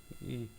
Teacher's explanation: ई का उच्चारण स्थान जो है तालव्य है, तालव्य, तालु बोलता है जिसको, तालु से बोला जाता है